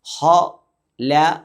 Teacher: ഹ എന്ന് തഫ്ഹീമായി വായ അടഞ്ഞതായ രൂപത്തിൽ ഘനപ്പിച്ച ഒരു ശബ്ദത്തോടുകൂടി ഉച്ചരിക്കണം